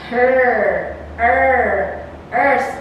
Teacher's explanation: articulated with the center of the tongue raised between how close and half open no firm contact is being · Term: central vowels